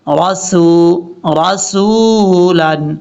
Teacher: سین کو لمبا کریں گے واو کے ساتھ ملا کے